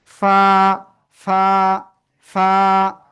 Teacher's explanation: নিচে ঠোঁটের পেট, উপরে দুই দাঁতের আগায় লাগাবো, লাগিয়ে হালকা বাতাস বের করব, এভাবে দেখবেন বাতাস আসে কিনা।